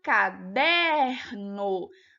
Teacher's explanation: uma alternativa correta e a última caderno não era uma oxítona era uma paroxítona né porque o der era sílaba tônica